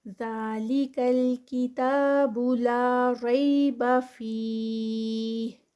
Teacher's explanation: ریبہ میں را جو ہے یہ بھی ہیوی ہوگا کیونکہ یہ زبر کے ساتھ آ رہا ہے